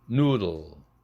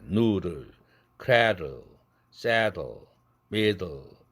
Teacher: 이제는 성절자음 L 사운드가 왔을 때 그 앞에 드 사운드가 아주 약해진다. 약한 파열이 된다. noodle, cradle, saddle, middle.